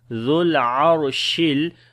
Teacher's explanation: On the ra we read in heavy sound, because ra has a sukoon sign and there is fatha before the ra. · zal we connect directly with the lam